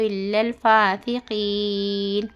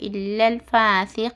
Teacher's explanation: ہوتا اور اس کے پہلے حرف مدہ ہے تو کیا ہے عارضی طور پر ہم مد لگا کر کھینچ کر 2 یا 4 یا 6 حرکت کے برابر ہم کھینچ کر پڑھنا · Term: مد عارض